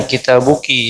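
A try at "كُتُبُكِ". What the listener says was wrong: Laisa kitabuki, walakin Kutubuki. Sama kitabuki ada yujad alif. Sama huna la yujad alif.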